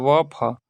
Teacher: दंत्योष्ठ निचले होठों और ऊपर के दांतों से व फ